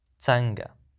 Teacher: Be careful to the pronunciation is tsanga. So it's a schwa sound after the ts sound.